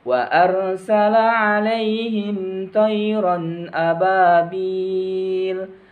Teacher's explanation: alaihim langsung dilepas alaihim thoiron tidak boleh ditahan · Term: izhar syafawi